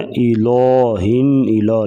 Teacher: الہ کا جو لام ہے، لام کو باریک پڑھیں گے. بعض لوگ لام کو موٹا پڑھ دیتے ہیں.